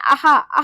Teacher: जब हम ये शब्द बोले तो जो हमारी आवाज है वो कंठ से आ रही है